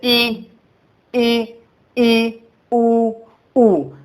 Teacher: वे स्वर जिनके उच्चारण मुख द्वार लगभग बंद रहता है। लगभग है ना, मान लिया जाए तो थोड़ी बस खुलता, ज्यादा नहीं।